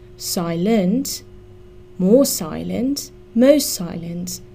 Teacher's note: please note that the stress in silent is on the first syllable